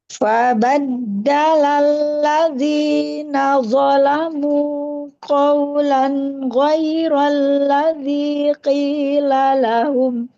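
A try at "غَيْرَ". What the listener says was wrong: Masih goiro, bukan G. goiro.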